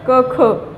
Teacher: क आणि ख चा गळ्यातून होतो, म्हणून ते काय कठोर. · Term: कंठ्य